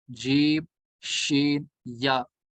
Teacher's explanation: जुबान का दरमियान लगेगा तालु के दरमियान के साथ